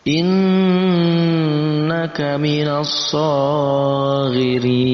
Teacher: Ya, jadi masuk dalam pembahasan gunnah musyaddadah, yaitu huruf yang dibaca dengung karena ada tasydid di situ. Itu dengan dengungan panjangnya 2 harakat.